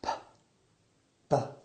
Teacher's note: P and B. I use my lips to stop the flow of air and then release it. P, B. The only difference is that the B is voiced and the P is aspirated. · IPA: /p/ and /b/